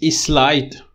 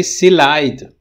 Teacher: In both of them, you're epenthesizing E, But in one of them, the epenthesis is word initial. In the other one, it's word medial.